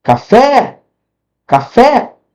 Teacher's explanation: Qual que foi mais forte? A última. Ó, essa aqui foi mais forte. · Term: oxítona